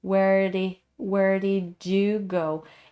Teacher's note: So where is reduced to where, and the R sound is blended into D, but it sounds like the flapping sound again